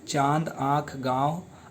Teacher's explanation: जिनका उच्चारण नाक और मुख दोनों से होता है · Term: अनुनासिका